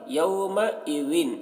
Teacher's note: ذال کی آواز باریک ہوگی